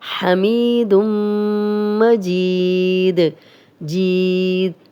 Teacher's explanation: جزم والی یا، پیچھے جیم پہ زیر، 2 حرکات لمبا کریں گے اور آگے دال پہ جزم لگائیں گے تو کلکلا بن جائے گا